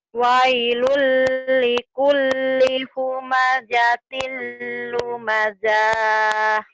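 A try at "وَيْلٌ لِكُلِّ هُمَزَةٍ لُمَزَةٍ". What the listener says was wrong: kenapa panjang? Lu masa nggak ada panjang ya? Karena kosar semua. Linya pendek. Wai, wailul likullihu, lihu. Wailul, wailul likulli humazatil lumazah.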